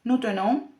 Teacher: con la E cerrada y la nasal